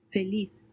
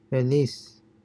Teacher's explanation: so you have th in spain and s in latin america